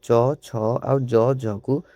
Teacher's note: ଚ ଛ ଆଉ ଜ ଝକୁ ଉଚ୍ଚାରଣ କଲାବେଳେ ଆମର ଜିଭ ଯାଇକି ତାଳୁକୁ ସ୍ପର୍ଶ କରେ। କାହାକୁ ନା ତାଳୁକୁ ସ୍ପର୍ଶ କରେ। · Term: ତାଲବ୍ୟ ବର୍ଣ୍ଣ